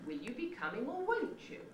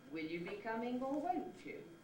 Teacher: the pitch of the successive accented syllables drops down again and establishes a new starting point for the rising position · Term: climbing